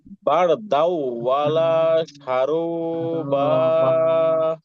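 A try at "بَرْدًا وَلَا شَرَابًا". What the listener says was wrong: ভাই বার দাওটা গুণা হয় না হ্যাঁ পরেগুলো ঠিক আছে বার দাও একটু গুণা করেন বলেন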